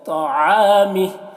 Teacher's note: تو کو موٹا کر کے عین کو حلق سے ادا کریں گے